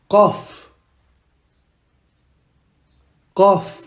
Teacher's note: Qaf. Et pas kaf. On dit qaf. Ça doit venir de la gorge.